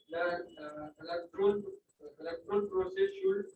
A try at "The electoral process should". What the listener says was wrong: Electoral process electoral sir, इधर इधर जितना ही पढ़ा ना, इसमें एक कॉमा था, एक फुल स्टॉप था, रुकना है, रावलपिंडी एक्सप्रेस से भागना नहीं है ना, समझ रही है।